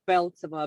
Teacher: I typically just put the stress on the first half